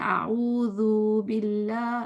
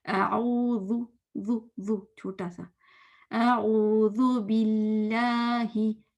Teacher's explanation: आ को छोटा, ओ को लंबा, जाल को छोटा। हम कहते हैं आऊज़ु बिल्लाह, ज़ू नहीं, आऊज़ु, ज़ू छोटा सा, आऊज़ु बिल्लाहि, हे, हे, हे, हे क्लियर होना चाहिए।